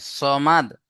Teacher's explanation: সদ মুখ গোল করে পড়তে হয় না? সদ জাবার স, মুখ গোল হবে।